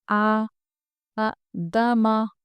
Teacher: کھڑا زبر حروف مدہ الف کے برابر ہوتا ہے، اس لیے ہم کو اس کو کھینچنا ہے، کیونکہ مدہ کا کام ہی ہوتا ہے ورڈ کو کھینچنا۔